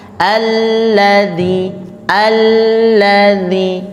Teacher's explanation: ya Nah kalau dalam ilmunya lam itu tasydid itu dibagi dua jadi lamnya jadi ada dua lam yang pertama sukunkan Dulu Al Al terus lam yang kedua baru dihidupkan dengan harakatnya